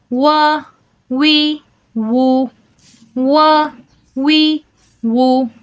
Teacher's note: دونوں ہونٹوں کو گول کرنے سے حرف واو ادا ہوتا ہے۔ تو آپ نے اس میں اس بات کا خیال رکھنا ہے کہ واو کو ادا کرتے وقت آپ کے ہونٹ گول ہونے چاہیے، آپس میں ملنے نہیں چاہیے، صرف سائٹوں سے ہی آپس میں ملیں گے، درمیان سے ہونٹ گول ہی رہیں گے، آپس میں ملیں گے نہیں۔